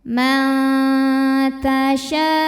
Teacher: seri atas tapi baru mau saja jadi belum menyentuh nah sehingga menghasilkan bunyi ee dengung yang sedikit saja suara masuk hidung sedikit aliran suara yang keluar dari mulut banyak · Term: samar-samar